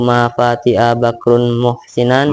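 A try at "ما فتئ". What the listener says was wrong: Mafati'a jangan mafati'a, pendek fati'a.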